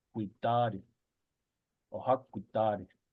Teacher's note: In the Pyramid Lake dialect, guidad is pronounced with a T.